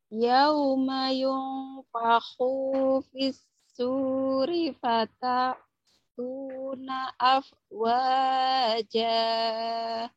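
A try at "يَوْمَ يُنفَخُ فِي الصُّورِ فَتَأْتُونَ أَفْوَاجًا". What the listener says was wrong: Yauma yunfakhu kho-nya ya kurang ngorok ya.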